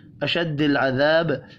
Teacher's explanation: الف مدہ کو ایک الف کے برابر کھینچ کر پڑھیں گے. وف کی صورت میں با ساکن پڑھا جائے گا، با ساکن ہو تو قلقلہ بھی کرتے ہیں.